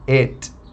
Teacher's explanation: O et possui o T mudo. Então, a gente não pode colocar uma vogalzinha ali depois do T